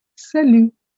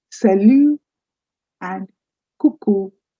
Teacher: the word salu has a t at the end but that is silent. So you don't say salute, you say sal.